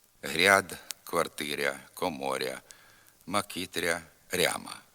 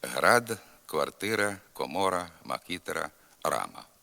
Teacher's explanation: тхір четвер гірки морква у частині лівобережних наддніпрянських та слобожанських говорів пом'якшується звук р перед а в окремих словах